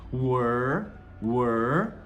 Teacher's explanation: Eu falo o é normal, e aí eu faço um R bem enrolado de porta, were. Se eu colocar só um D no final agora, word, seria palavra, mas eu quero mundo, não quero palavra, eu quero com L.